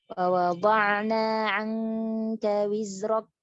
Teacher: huruf kaf yang diucapkan dengan sifat syiddah tanpa sifat hamas. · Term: al-kafus somma